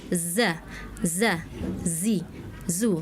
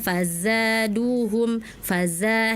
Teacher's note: Jadi kurang ada desisnya, kurang ada saofirnya ya. Huruf za itu ada shofir, ada desis